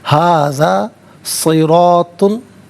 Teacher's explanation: रा पर ज़बर, रा को पुर करके पढ़ेंगे और तो को भी पुर करके पढ़ेंगे